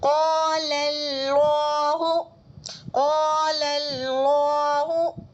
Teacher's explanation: قال یہ والا لام جو ہے باریک پڑھا جائے گا لیکن اللہ کا لام پر ہوگا